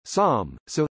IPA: ˈsõ